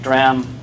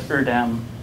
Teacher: something like dram sounds good to a human, but erdam doesn't sound as good because the D is quieter than the R